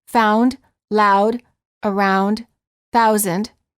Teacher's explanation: the lips are not rounded but as you move toward the second part the ooh the lips begin to close and become more tense the tongue moves from a relaxed low position to a high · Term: ow sound